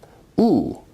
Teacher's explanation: oo is a high, back, rounded vowel